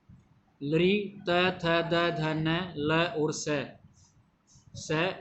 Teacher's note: लृ त थ द ध न ल और स दंत्य सकार होता है स, इनका उच्चारण स्थान दंत है